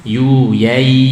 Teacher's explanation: tidak ada dengung sama sekali. Kita pencet hidung tetap lancar.